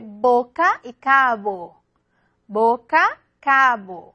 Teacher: Entonces, en boca, los labios se tocan de una manera más firme, más fuerte. Cabo, a veces casi no se tocan, ¿no?